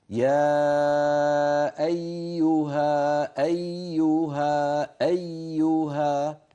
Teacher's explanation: يعني صوت الياء مستمر، هي مشددة غير شديدة، مشددة بمعنى مضاعفة، يا إين أيو، لكن ما في انقطاع بصوتها. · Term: الياء المشددة